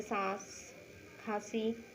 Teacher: इनके उच्चारण देखिए, वायु नासिका और मुख दोनों से निकलती है, मतलब नाक और मुंह से निकलती है। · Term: अनुनासिक